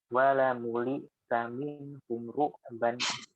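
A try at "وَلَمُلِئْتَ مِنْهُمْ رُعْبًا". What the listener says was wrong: Baik, bagus.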